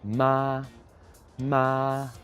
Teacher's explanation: stays at the same the same level so it's ma ma doesn't go up doesn't go down just stays the same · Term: first tone